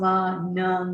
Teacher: M is voiced. Remember, all nasal sounds are voiced.